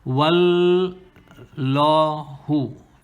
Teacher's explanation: Okay, so let's see what explanation we have here. Qul wal, this lam is mushaddada, so you gotta hold it for 2 counts, okay, to emphasize the lam, to make it be doubled.